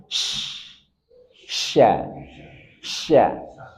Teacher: shin dia punya sifat tafashi, hembusan dalam menyebar